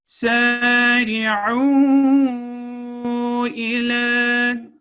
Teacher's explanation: اب یہاں پہ واو جو ہے اس کے اوپر مدہ صغیرہ ہے اور آخر میں لام کے اوپر فتحہ اشباعیہ یعنی کھڑی زبر ہے جس کی ساؤنڈ 2 سیکنڈ کی ہوتی ہے